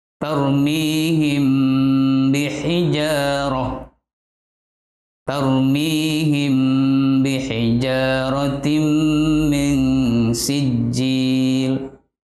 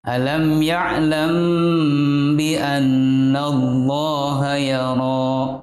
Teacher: Cara membacanya yaitu menyamarkan bacaan mim antara mim dan ba, seakan-akan seperti didengungkan. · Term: ikhfa syafawi